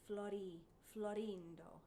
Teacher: the small lowercase r means to flip the r so the word florindo has a flipped r it's like a d sound · So the word Florindo has a flipped R. It's like a D sound, Florindo. And then if you have a rolled R later, it'll be connected with a consonant or at the end of a word.